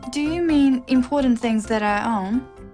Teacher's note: It's a yes no question with a rising tone.